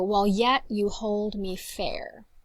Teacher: I'm sensing a pattern of unstressed, stressed, unstressed, stressed, unstressed, stressed